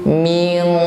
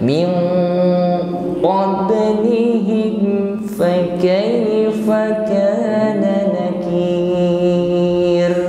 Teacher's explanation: Jadi bukan sekedar ming, ini masih ringan, ming, karena huruf qaf ini memiliki sifat isti'la yang ketika mengucapkannya ini pangkal lidahnya terangkat, maka otomatis suaranya menjadi tebal. Bukan ming tetapi ming qablihim fakaifa kana nakir. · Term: huruf isti'la